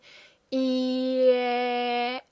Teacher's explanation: very much in the front again, and our lips are wide.